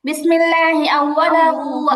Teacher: আউওয়ালা এখানে টান হবে না। আউওয়ালাহুতে গিয়ে টান হবে।